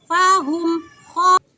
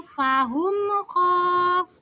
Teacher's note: Jangan didengungkan karena itu hukumnya ijhar syafawi